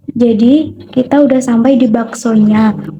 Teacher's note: terjadi penghilangan fonem konsonan S pada kata sudah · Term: gejala elisi